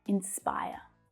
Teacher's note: In my accent, you can't hear that final R sound, but you would in an American accent.